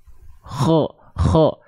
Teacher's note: tolong Ustaz cara pelafalan huruf k oke huruf ko itu dilafalkan huruf ko itu dilafalkan dari ee ujung tenggorokan kita